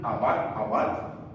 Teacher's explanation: estas dos palabras esta que comienza con alif y esta que comienza con agi suenan igual las dos suenan aat y apat eh pero su traducción al